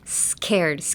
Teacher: So a lot of air is actually coming out of my mouth like in between my teeth when I say the s in scared.